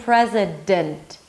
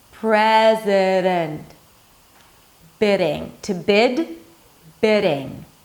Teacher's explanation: So again, going back to the pronunciation of the D in the middle of the word between two vowels, you bring the tongue up, but you just slightly touch the upper palate. You're suggesting that there is a D there. Riding. Think of making it super soft, super sweet, super light.